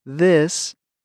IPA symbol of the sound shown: ð